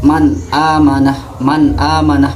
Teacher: Seperti contoh man amanah, maka harus dibaca terang, tidak boleh dibaca dengung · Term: idhar halki